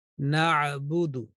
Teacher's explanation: Ayn should be pronounced from the middle of throat, middle of throat.